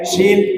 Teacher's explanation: pakai syin Kara syin itu makhrajnya Tengah lidah H Tengah lidah Tengah lidah nempel ke langit-langit